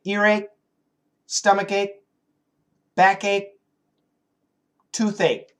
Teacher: Earache, and we can stop the K.